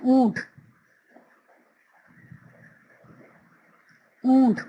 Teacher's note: اونٹ میں نون کی آواز زیادہ نہیں آ رہی، اس لیے نون غنہ ہے